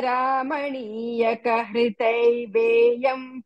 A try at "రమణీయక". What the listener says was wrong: రామణి తర్వాత మధ్యలో ఆకుండా చెప్పండి